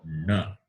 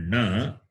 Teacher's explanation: the last letter, which is cerebral plus nasal, which is na. So you have to pronounce a na, but the tongue touching the roof.